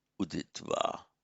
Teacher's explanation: a preceding va tends to soften just to an u. That is why that accounts for the uditva.